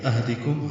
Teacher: ہا ساکن پہ ہمس ہے، دال جلدی سے پڑھیں گے، کم کاف باریک، میم ساکن پہ اظہار شفی.